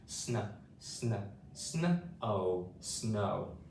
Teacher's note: we have two adjacent consonant sounds and we want to blend them quickly together to make a sn sound